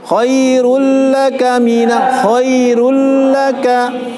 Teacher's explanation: Kalau ada tanwin, fathah, kasrah, doma atau nun sukun bertemu huruf lam dan ro tidak ditahan, dimasukkan tadi tidak ditahan, namanya idgham bila guna ya. Namanya idgham tidak boleh tahan. Idgham mesti masukkan dengan tidak didengungkan, ya.